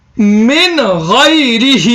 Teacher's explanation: نون ساکن کے بعد حروف حلقی کے 6 حرفوں میں سے غین آ رہا ہے، اس لیے بغیر گنہ کے تلاوت کریں گے۔